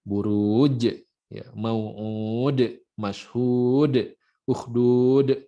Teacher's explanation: Akhir ayat yang kita baca panjang, mad arid li sukun, tapi berhentinya dengan qalqalah.